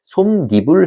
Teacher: 어근 솜 뒤에 모음 이로 시작하는 어근이 와서 합쳐졌을 때 솜니불 하면서 이제 니은이 첨가가 된 거죠. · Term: 니은 첨가